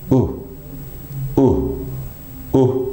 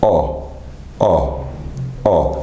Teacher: because my jaw is a little bit closer, or in a closed position, my lips are more able to go into a more forward rounded position